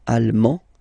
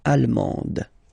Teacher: you don't pronounce the final D, but then you pronounce it here for the feminine form